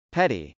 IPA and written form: pˈɛt.i (petty)